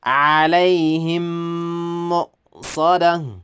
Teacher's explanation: ኢድጋም የሚባል አለ። ኢድጋም የሚባል የሆነ ህግ አለ። እዛ ላይ ወስደን ሚም ስኩኑን ወስደን በሚም ضማው ላይ እናስገባለን። ሙሉ በሙሉ ነው የምናስገባው ማለት ነው።